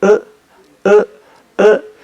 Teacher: Y luego esta otra que ya es más exótica en el sentido de singular o poco común, que es una variante posterior alta no redondeada y se transcribe en el alfabeto fonético internacional con una M minúscula al revés